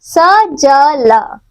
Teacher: वत्सर्य दांतों की जड़ों से